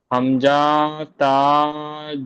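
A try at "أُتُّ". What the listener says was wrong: হামজাটা টান হচ্ছে, হ্যাঁ টান হবে না, হামজা তা তা।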